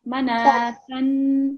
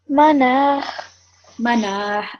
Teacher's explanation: So basically the ta sound, the tanween is taken away and replaced with the sukoon, and the ta sound becomes a ha sound